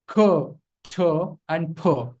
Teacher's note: there's going to be a gush of air that goes out of your mouth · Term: aspirated sound